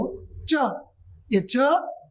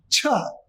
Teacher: ये च जो है अल्प प्राण है